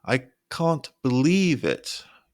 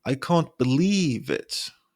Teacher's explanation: your voice gets higher on believe again I can't believe it that's incredible your pitch Rises to